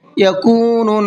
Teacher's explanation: نون کے اوپر تشدید ہے، غنہ کریں گے